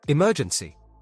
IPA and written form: ɪˈmɜːdʒənsi (Emergency)